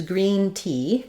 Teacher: it's a high front vowel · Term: e sound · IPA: /i/